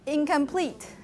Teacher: You have a k sound right after the n, and it's spreading the place of articulation to make that nasal the same organ, the same place of articulation.